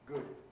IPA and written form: gud (good)